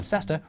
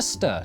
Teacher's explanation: too busy to pronounce all the syllables in Cester reduced it to stir to save time